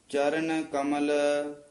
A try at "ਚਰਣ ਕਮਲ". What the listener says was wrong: ਨਾਣਾ ਲਾ ਕੇ ਚਾਰਣ ਕਮਲ।